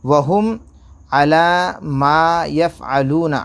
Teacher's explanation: عَلَى کے اوپر کھڑا زبر کھینچیں گے لام کے اوپر